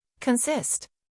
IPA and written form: kənˈsɪst (Consist)